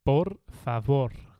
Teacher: the V you pronounce it like a b in Spain so it's like por favor so you don't say the V